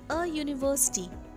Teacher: the first letter U is pronounced as Y-O-O sound, and hence it begins with a consonant sound